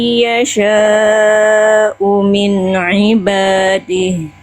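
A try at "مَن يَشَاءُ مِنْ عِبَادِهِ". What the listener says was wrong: sudah ditahan juga cuman kadarnya terlalu e terlalu cepat sedikit. Harusnya kadar idgam biguna ditahannya sama dengan kadar nun tasdid.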